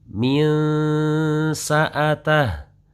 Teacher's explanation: ada sensasi terdengar antara suara en dan suara eng. Itu pada saat bertemu dengan huruf sin. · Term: ikhfa